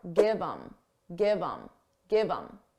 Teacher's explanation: Get rid of the H and it will sound like im.